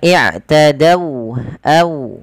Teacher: Ini kita namakan dengan bacaan lin, yang dimana dia lembut di dalam melafalkan wawnya